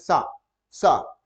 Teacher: जीभ हमारी दांत पे टच कर जाती है, और जब इस सा को बोलते हैं सा, सा, तो इसको दांत पे टच कर जाती है, इसलिए इसको दंत सा कहते हैं, दंत सा, दंत सा इसको कहते हैं।